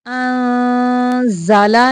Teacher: इख्फा का कायदा है, आवाज़ को गुन्ना करते हुए नाक से छुपा के निकालेंगे